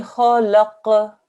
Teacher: Okay, and then when we finish, we're going to apply the rules of waqf, which on this one we haven't taught you yet, but this will go to a Sarkin qaf, and a Sarkin qaf has a qalqala sound to it, a slight bounce.